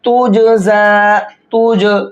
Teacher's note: इस जीम के अंदर कलकला करके पढ़ेंगे।